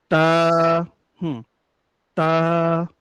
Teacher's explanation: তা হচ্ছে যে জিহ্বার আগাটা রয়েছে সামনের উপরে দুই দাঁতের গোড়ার সঙ্গে লেগে কিন্তু এই তা উচ্চারণটা হয়।